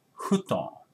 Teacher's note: we don't have F sound. So in Japan, we say futon. It's hu, okay?